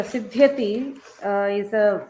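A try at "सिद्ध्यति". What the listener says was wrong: Short vowel. You should not elongate Siddhyati. E, like it's not E.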